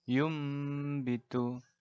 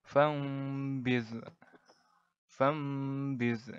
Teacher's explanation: jadi dibaca nun mati atau tanwin ya ini menjadi suara huruf mim mati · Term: iqlab